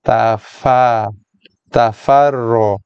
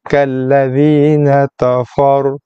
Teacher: ta jadi to, fa jadi fo.